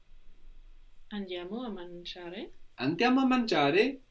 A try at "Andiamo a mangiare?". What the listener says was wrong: No, just the tone of voice. Again, the change is only in the tone of voice. Here we make it sound like a statement.